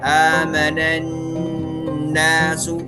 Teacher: Selama ada nun bertasydid maka dia akan dibaca ditahan dengung 2 harakat begitu. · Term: gunnah